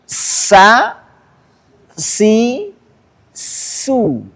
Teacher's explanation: ujung lidah bertemu gigi seri bawah